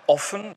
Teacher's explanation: das ist auch betont, ist aber ein ungespannter Vokal, deswegen ist er nicht lang. Das heißt nicht offen. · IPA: [ʔɔfən]